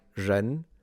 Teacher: some r's in Mandarin do sound like a zh, like a j a little bit